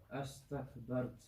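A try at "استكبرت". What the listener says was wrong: Astakbar, the ra, I want to hear the ra full mouth.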